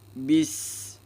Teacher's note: Bis berdesis ya, dan mengalir napas ya. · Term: al-mahmus atau ames